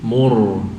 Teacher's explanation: Ini dhammah tebal ya. Ra sukun setelah dhammah tebal.